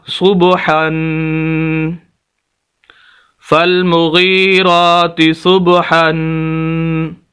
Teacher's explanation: ہاں، یہاں دوسری بات یہاں پر یہ ہے کہ ہا کے اوپر 2 زبر ہے، 2 زبر 2 زیر 2 پیش، انہیں تنوین بولا جاتا ہے، تو جس لفظ کے اوپر بھی تنوین آ جائے گی، یعنی 2 زبر یا 2 زیر یا 2 پیش ہوگا، اس لفظ کے اوپر ہم غنہ کریں گے، ناک میں آواز جائے گی، تو اب ہمارا لفظ ہو جائے گا صبحن، فالمغیرات صبحن۔